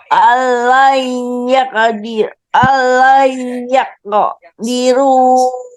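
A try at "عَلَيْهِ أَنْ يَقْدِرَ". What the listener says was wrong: Diro, Bu, bukan diru, diro.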